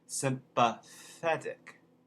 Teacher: in cockney again to review you replace a voiceless th with f